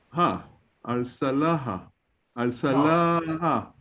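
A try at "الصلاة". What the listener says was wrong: No, because it got two dots. It's ta marbuta. It's not hey. It's ta. When the ta marbuta is, of course, always at the end of a word. If it does not have any vowel, we disregard it.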